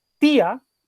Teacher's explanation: que las dos vocales las voy a separar en sílabas distintas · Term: hiato